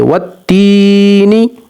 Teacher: اب یہاں پر دیکھیے یا سے پہلے زیر ہے تو یا حروف مدہ ہے، یا کو 1 سیکنڈ تک لمبا کریں گے